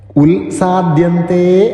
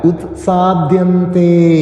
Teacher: ആ ഉത്ത് എന്നുള്ളത് തകാരം കേൾക്കുന്ന രീതിയിൽ ചൊല്ലാൻ ശ്രമിക്കുക ഉൽസാധ്യന്തേ അല്ല ഉത്സാധ്യന്തേ അതുപോലെ ഉത്സാധ്യന്തതേ എന്നുള്ളത് ഉത്സാധ്യന്തേ എന്നാകരുത് ഉത്സാധ്യന്തേ അവിടെയും ആതേ